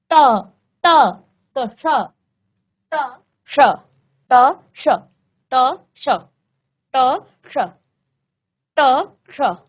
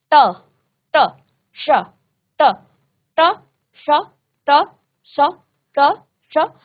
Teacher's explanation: ये जो श है बेटा ये आपका मूर्धा स्थान को स्पर्श करता है। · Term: मूर्धन्य स